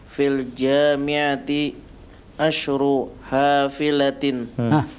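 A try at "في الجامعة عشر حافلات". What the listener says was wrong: Panjang pendeknya. Asyru hafilatin. Intabih, jangan terburu-buru.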